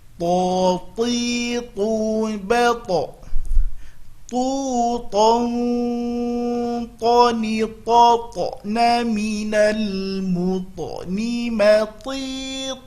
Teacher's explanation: To, salah, dia bukan huruf hamas, maka kita berusaha penyebutannya tidak mengeluarkan hamas pada penyebutan huruf to